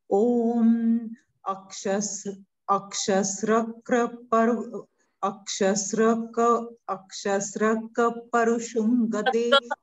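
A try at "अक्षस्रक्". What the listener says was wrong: Fundo, it is half ka sruk. Say sruk. Sruk. Sruk.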